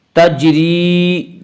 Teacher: تجری جیم میں قلقلہ ہوگا